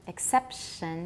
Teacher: Don't round the sh. There's too much rounding in Taiwan normally.